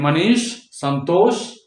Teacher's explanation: और यह है मूर्धन्य श। मूर्धन्य श तालू से थोड़ा पीछे चिकना वाला हिस्सा, मूर्धा